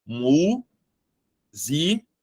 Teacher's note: o assento ele tá na anti penúltima sílaba essa sílaba é a sílaba tônica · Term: proparoxítona